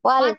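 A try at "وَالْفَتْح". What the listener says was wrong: Jangan fat. Wal fat tertahan. Suaranya tertahan. Wal fat aslinya gitu ya. Wal fat. Kemudian dialirkan ha sukun. Wal fat. Ada aliran. jadi ditahan ya, ditahan dulu ta sukun ya, karena ini diberikan hak-hak hurufnya harus diberikan ya. Wal fat, nah, hak hurufnya ta ini ditahan suaranya, yang ngalir itu nafas.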